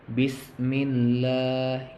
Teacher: Di sini lamnya panjang 1 alif 2 harkat. Jadi bacanya itu mad tabi'i.